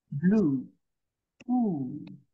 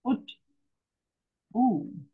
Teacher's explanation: Then there is the vav with the U in the tummy, shurek, U as in blue. You see, it's longer than foot.